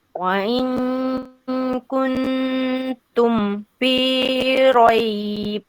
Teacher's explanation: pastikan dekat kun ni kena dengung sikit. Kalau tadi kun tu dah macam izhar tu, kun tu.